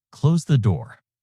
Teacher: Pitch falls indicating a command. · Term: falling intonation